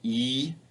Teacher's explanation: a high front vowel just like with the short I but this high front vowel is long e and it's tense so you can feel your tongue being pulled tight across your mouth